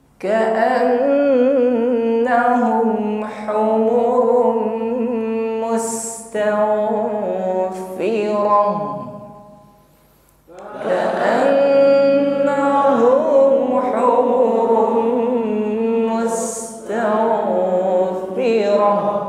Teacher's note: Ditahan dan sempurnakan dengungnya saat mengucapkan nun yang bertasydid. Bukan ka'annahum, tahan dan dengungkan.